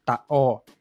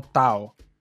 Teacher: quando tiver vogais juntas terá uma parada glotal no meio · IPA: /ʔ/